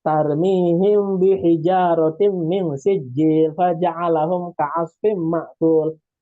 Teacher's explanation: Tarmihim itu kan mim sukun ketemu ba, hukum bacaannya kan ikhfa syafawi.